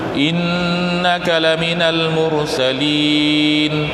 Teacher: Inna tu nun tu nun sabdu wajib al-ghunnah, wajib dengung. Yang kita baca innaka lamin, dia kalau kita nak baca betul, kita nak baca cara tartil, kena jelas dengungnya 2 harakat.